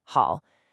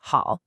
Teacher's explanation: it's the fourth tone. The falling tone. And that single change in tone shifts the meaning completely to to be fond of.